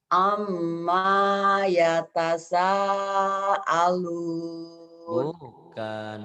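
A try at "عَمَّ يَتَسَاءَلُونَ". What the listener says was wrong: bukan amma, bukan. Yang ditahan M-nya. Maknya dilepas. Ain. Amma yatasaalun.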